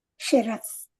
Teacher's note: శిరస్ మొదటిదేమో తాళవ్య సకారం అండి, తర్వాతది లాస్ట్ది దంత్య సకారం. శిరస్.